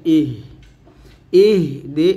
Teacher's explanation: হাটা আমরা গলার শুরু থেকে নিয়ে আসবো বাতাসে বের হবে